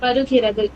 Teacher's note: வருகிறது சொல்லும்போது மேல்பல் கீழ் உதட கடிபடரும்